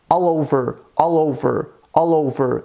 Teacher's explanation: Eu uni o som da letra L em all com O, de over. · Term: connected speech